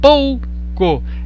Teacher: A letra O ela é pronunciada um pouco mais alta que a letra U. Por isso que é um ditongo decrescente.